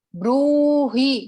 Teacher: બ્રૂહી, બ્રુ ને થોડોક આપણે લંબાવશું. હી ને રસ્વઈ હી છે, એટલે આપણે હી ને નથી લંબાવવાનો. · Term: દીર્ઘ માત્રા